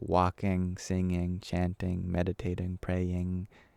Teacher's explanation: while the mouth is closed we lift the back of the tongue up to form an NG sound actually we do have it in English at the end of